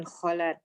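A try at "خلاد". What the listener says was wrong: Khalad itu bacanya. Panjang yang la-nya kedua. Khalad.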